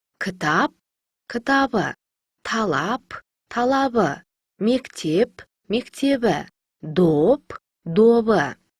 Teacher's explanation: П дыбысына аяқталған сөздерге дауысты дыбыстары жалғанса, П дыбысы Б-ға айналады.